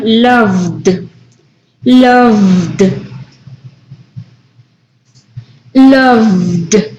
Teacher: Intenta, Cari, loved. ¿Sientes vibración cuando pronuncias ese verbo en tus cuerdas vocales? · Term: voiced